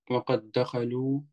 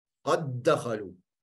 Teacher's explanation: Twee dal. Maar je spreekt het uit als één dal met een shadda. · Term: mutamathil